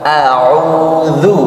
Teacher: a'udzu panjangnya 2 harokat